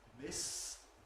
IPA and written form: mɪs (miss)